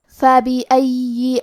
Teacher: کلمت فَبِأَيِّ میں فا پہ زبر ہے، با کے نیچے زیر ہے اور الف پہ زبر ہے، تو ہم یہ تینوں حرکات کو ظاہر کریں گے. آخری میں یا پہ تشدید ہے تو ہمیں دو حرف کے برابر یا کو پڑھنا ہے، اور کیونکہ تشدید زیر کا ہے تو ہم زیر کو ظاہر کریں گے.